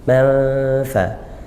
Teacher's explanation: tanwin bertemu fa, ikhfa haqiqi, baca dengung, samar dengung ya, samar. Manfa, bunyi nun sukunnya masih ada tapi menuju ke makhrajnya huruf fa.